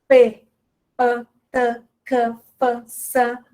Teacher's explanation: a consoante surda, elas não fazem vibrar as cordas vocais